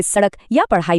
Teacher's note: उत्क्षिप्त व्यंजन, जैसे ड और र, एक खास फ्लैप वाली आवाज निकालते हैं, जैसे सड़क या पढ़ाई में।